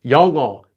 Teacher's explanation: Notice how the ng kind of flows over. 영어. It's not 영어, it's 영어.